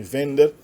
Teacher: acentuada no tema e não na terminação